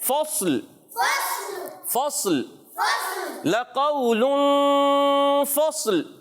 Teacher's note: اس انداز سے پڑھیں گے کہ صاد بھی نہ ہلے، اس پر زبر بھی نہ آئے اور لام بھی ساکن ہو جائے